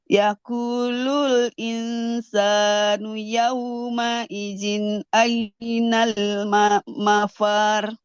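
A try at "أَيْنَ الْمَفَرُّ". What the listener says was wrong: Jangan panjang.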